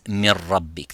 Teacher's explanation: So as you can see, if we say, for example, min rabbik becomes mir rabbik, the noon disappears completely. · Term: complete idgham